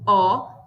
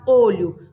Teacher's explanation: Lembrando que o E, ele pode ter um som aberto, com o som de E, ou ele pode ter um som fechado, de E. E o O, ele pode ter um som aberto, O, ou um som fechado, olho.